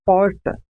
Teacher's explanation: há um movimento de retroflexão da língua em direção ao fundo da boca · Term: R retroflexo